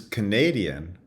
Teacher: and then schwa's in the second two da versus Canadian where the stress shifts onto the second syllable and the first syllable now has the schwa